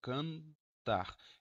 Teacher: esse N faz parte da sílaba, aí sim, sempre vai ter o ressô nasal